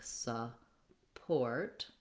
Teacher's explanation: in the word support, we have stress on port, and then this U is an sound. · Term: second syllable stress